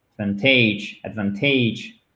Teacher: L'accent tonique est sur la deuxième syllabe.